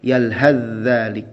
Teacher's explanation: maka huruf tha melebur ke huruf zal